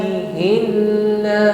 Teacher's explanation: lafaz Allah di sini bunyinya tarqik karena sebelum lafaz Allah ada harakat kasr bukan biillah bukan ya karena sebelumnya ada harakat kasrah maka bunyinya